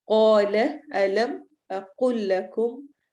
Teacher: اقل قاف کو موٹا پڑھنا ہے